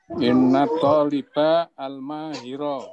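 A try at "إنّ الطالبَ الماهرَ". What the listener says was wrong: Bagus,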